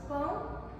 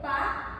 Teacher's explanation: as palavras pão com a vogal nasalizada e pá ou sem a nasalização tem significado diferente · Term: nasalidade das vogais